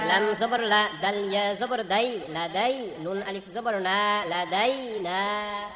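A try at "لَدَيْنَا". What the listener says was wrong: মাশাআল্লাহ এখানে দালিয়া জবর দাই টান হয় নাই কেন এটা হচ্ছে লিনের হরফ খাতায় লিখে নেন লিনের হরফ দুইটি জবরের বাম পাশে এই যে জবর বাম পাশে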